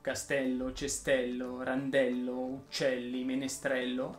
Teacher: del gerundio le parole che terminano in sé ll richiedono che la è che viene prima delle due l sia pronunciata aperta